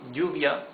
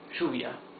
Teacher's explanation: In some countries in Latin America, it's pronounced sh.